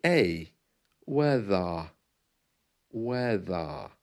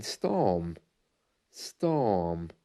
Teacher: the end is silent it sounds like a weather weather the r is well it's almost gone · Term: received pronunciation